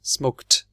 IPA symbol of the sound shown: t